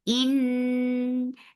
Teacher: For kasra give E sound attached with nun will get sifa of gunna. This gunna is akmal, so keep the sound in your nose for a longer time. In, and then it is two counts long.